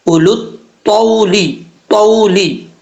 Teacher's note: مع رسول ہستاذانا کا اولو الطولی، طا حروف مصالحہ میں سے ہے، پر پڑھا جائے گا، اس کو فل ماؤتھ پڑھیں گے۔ اس کو پڑھنے کے لیے جب تک زبان اوپر کی طرف نہیں اٹھے گی اس وقت تک یہ طا نہیں پڑھا جائے گا۔ · اس کو پڑھنے کے لیے جب تک زبان اوپر کی طرف نہیں اٹھے گی اس وقت تک یہ طا نہیں پڑھا جائے گا۔ دو نقطوں والا جو تا ہوتا ہے وہ باریک پڑھا جاتا ہے، لیکن یہ جو طا ہے یہ پر پڑھا جائے گا